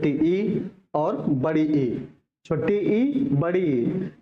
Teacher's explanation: जब बोलते हैं हम तो हमारी जीभ जो है तालू में लड़ती है इसलिए इसे तालब भी स्वर कहते हैं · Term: तालव्य स्वर